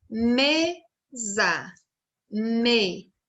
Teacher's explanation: Aqui na mesa, o me é a sílaba tônica. Então, a sílaba tônica é a sílaba mais forte nas palavras e as outras sílabas são as átonas, quer dizer, elas têm menos força.